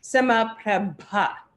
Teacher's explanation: the letter is aspirated, which means it's got a little bit of a kind of explosive quality to the sound